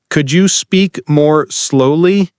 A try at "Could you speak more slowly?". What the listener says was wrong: Put a little stress on slowly, like this. Could you speak more slowly? Hear the longer slow.